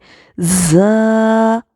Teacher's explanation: یہ زا جو ہے حروف صفیریہ میں سے ہے، یعنی سیٹی والے حروف میں سے ہے۔ مطلب اس کو ادا کرتے وقت ہماری آواز جیسے سیٹی کی طرح تیز نکلنی چاہیے۔